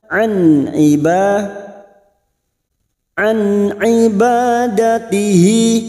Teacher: bertemu dengan enam huruf ini Hamzah ha ha kha Ain gain dibaca jelas tanpa mendengung tanpa menimbulkan tawalud dan sakta